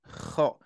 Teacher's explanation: Lak-laknya menggetar gitu kan ya. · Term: huruf kho